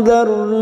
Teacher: Nun sukun bertemu dal ikfa hakiki kita samarkan bunyi nun sukun 3 harokat